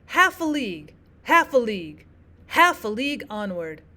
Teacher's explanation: you've got one stressed and two unstressed in his dactillic poem. · The dactylic poem, remember, is going to be opposite. Your stressed syllable comes first, followed by two unstressed syllables. So going back to English first, we have Alfred Lord Tennyson's Charge of the Light Brigade, where you'll notice you've got one stressed and two unstressed in his dactylic poem.